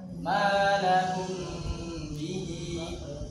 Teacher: Cara bacanya dengan gunah yang panjang. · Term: ikhfa syafawi